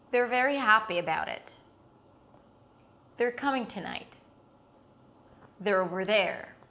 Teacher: the word 'are' reduces into /er/ and when a function word - it's a function word- reduces we connect it to whatever comes before or after, okay? · when you have the word they are and the word are is reduced, what you receive is actually there.